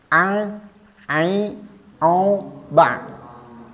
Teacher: Nah, disitulah letaknya makhraj huruf ain. Dan huruf ain ini bergetar, menggetarkan epiglotisnya.